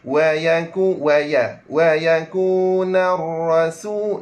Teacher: ra mesti kena tebalkan ra tersebut. Ini orang panggil ra tafkhim. Ra tebal.